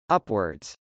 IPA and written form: ˈʌpwɚdz (upwards)